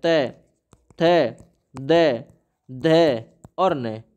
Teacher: दंत्य तख्ती लगी दांत में त थ द द और न